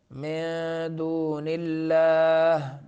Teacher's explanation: नून को छुपाना है क्या करना है खफा करना है